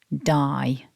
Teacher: the first syllable starts with the voiced de sound so you need to remember to vibrate your throat for that and then we've got the double vowel I I sew together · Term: voiced D sound